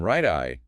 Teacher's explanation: in right eye, there's no pause. The T in right immediately links to the vowel in I. That's catenation.